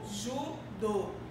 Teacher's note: Que a minha sílaba tônica tem um som fechado.